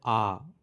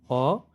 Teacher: अ से ज्यादा समय ले रहा है आ का उच्चारण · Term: दीर्घ स्वर